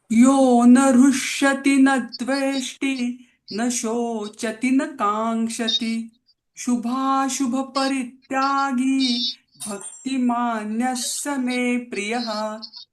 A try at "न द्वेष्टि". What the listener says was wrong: ताई छान म्हटलात, पण द्वेष्टीला दीर्घ नका करू. न द्वेष्टी.